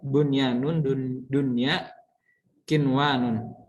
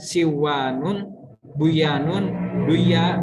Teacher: nun mati dan wawunya tidak dimasukkan, melainkan dibaca jelas, makanya namanya izhar wajib biasanya.